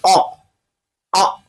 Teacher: कंठ। जब आ को बोलेंगे अ आ तो आपके कंठ से आवाज आएगी